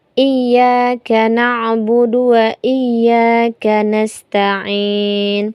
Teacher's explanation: Kemudian yang kesalahan yang sering terjadi pada ayat yang kelima ini adalah eh yang nastain ini kebanyakan orang mengganti sin ini dengan shad padahal ini adalah sin